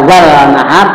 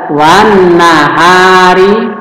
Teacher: Hukum bacaannya disebut alif lam syamsiyah, di mana lamnya dianggap tidak ada.